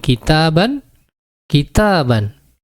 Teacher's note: Hanya di sini tidak tertulis sebagai nun mati, tetapi terucap sebagai nun mati. Maka disebut dengan tuntok la tuktab, atau terucap tetapi tidak tertulis.